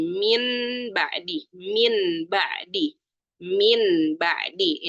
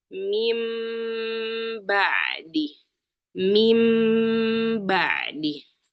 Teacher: Jadi nun sukun diganti dengan huruf mim ya. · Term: iqlab